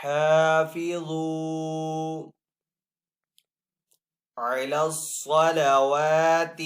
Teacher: صاد کو یہاں پہ پر پڑیں گے، صاد حروف مصالیہ میں سے ہے، واو کے اوپر یہاں پہ کھڑا زبر ہے تو واو کو ایک الف دو حرکات کے برابر کھینچ کر ادا کریں گے۔